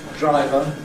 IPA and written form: ˈdraɪvə (driver)